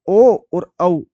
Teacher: ओ और औ इन दोनों का जो उच्चारण स्थान है, वो उच्चारण स्थान क्या है, कंठोष्ठम